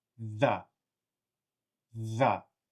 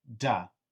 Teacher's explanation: And the D sound, the tongue is actually behind the teeth. In fact, it's actually probably behind the teeth and up on your gum.